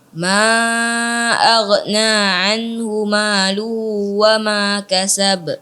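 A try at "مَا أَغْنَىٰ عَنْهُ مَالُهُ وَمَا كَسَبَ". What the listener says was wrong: Ya, kemudian ha-nya juga dijelaskan lagi. Ma aghna anhu maluhu luhu wa ma kasab.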